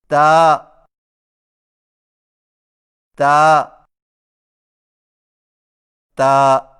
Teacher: تا کی ادائیگی میں زبان کی نوک کو ثنایا علیہ کی جڑ سے لگا کر باریک آواز میں پڑھیں